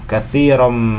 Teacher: Contohnya itu yaitu katsiran minadh-dhann, katsiran, yaitu melebur, tanwin fathah itu melebur kemudian disertai dengan dengung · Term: idgham bi ghunnah